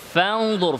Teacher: ফা থেকে দতে চলে যেতে হবে, মাঝখানে নুনের মাখরাজে জিহ্বা যাবে না। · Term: ইখফা